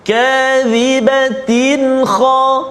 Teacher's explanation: tanwin bertemu dengan kha, izhar halqi, tanpa dengung